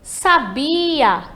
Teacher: Entre o sa e o a, temos a sílaba bi, que vai ser a tônica aí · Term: sílaba tônica